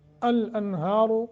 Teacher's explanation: الانہار، را کو پر کریں گے